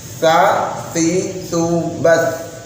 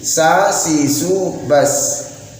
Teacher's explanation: mengganti huruf tha yang harusnya dibaca tipis menjadi huruf sin